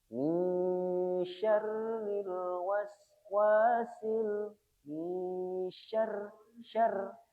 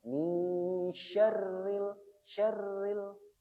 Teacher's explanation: rnya dibaca tipis karena dia berharakat kasroh artinya ketika dibaca tipis maka r-nya harus banyak getarannya